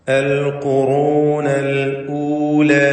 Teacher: ഖാഫ് റാ ഇവ തഫ്ഖീം ചെയ്ത് സ്വരഭാരത്തോടെ ഉച്ചരിക്കേണ്ടതാണ്. അൽ ഖുറൂനൽ ഊല, അവിടെ അല്ലൂല എന്ന് പറഞ്ഞു പോയത് അൽ ഖുറൂനൽ ഊല ഹംസ ക്ലിയറാക്കി വ്യക്തമാക്കി ഉച്ചരിക്കണം എന്നത് ശ്രദ്ധിക്കുക.